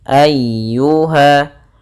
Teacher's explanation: Nah, di sini ada huruf ya yang berharokat tasydid. Ya termasuk huruf lembut dan dia harus ditekan karena dia tasydid.